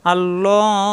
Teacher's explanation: অক্ফ করলে লাস্টের অক্ষরে আমরা জানি সাকিন হয়ে যায়, আর মাদের হরফ মাদে আর দিয়ে তিন আলিপ টান হয়ে যায়। আল্লাহ, আল্লাহ শব্দের ডানে জবর আসছে, আল্লাহ শব্দ মোটা হবে, লা হবে না